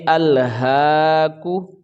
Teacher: ہا کے اوپر کھڑی زبر ہے، 1 الف کے برابر، اس کو کھینچ کے ادا کریں گے۔ کاف کے اوپر پیش ہے، یہ حرکات میں سے ہے تو اس کو ہم جلدی ادا کریں گے، اس کو ہم کھینچ کے نہیں پڑھ سکتے، تو پڑھیں گے الہاکو۔